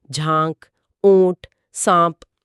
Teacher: نون غنہ، یہ ایک صاف ناک سے نکلنے والی گونج والی آواز ہے